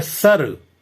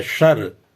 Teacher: अगला है दंत सा है और तालब्य सा है। दंत सा में अगर कर दिया जाए सर और तालब्य सा में कर दिया जाए शर